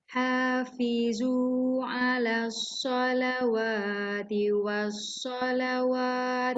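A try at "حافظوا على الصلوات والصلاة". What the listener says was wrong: Bukan. Wa tu sekali je. Ala solawah tu sekali je. Lepas tu tiwas solah je. Bukan solawah. Tengok alif tu kedudukan dia tepat tak sama.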